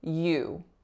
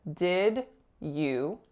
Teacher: So this begins with a y consonant and it glides right into that oo moving diphthongized vowel.